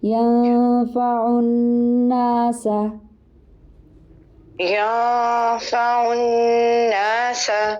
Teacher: اچھا, ینفع میں اخفا ہوگا, اخفا کے لیے آپ نے زبان اسٹریٹ رکھنی ہوتی ہے, نون کی ساؤنڈ نہیں آنی چاہیے, ہلکی سی آئے گی لیکن نون کے مخرج پہ زبان نہیں لگے گی, اوپر تالو میں نہیں ہوگی, زبان اسٹریٹ ہوگی.